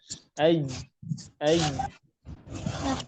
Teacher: Maka huruf jim pengucapannya harus tertahan nafasnya. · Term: jahar